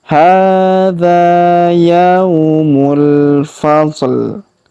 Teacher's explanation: Hadza yaumul, huruf ya kita ayun sekali karena waw sukun. Yaumul, huruf mu langsung sambung ke alif lam qamariyah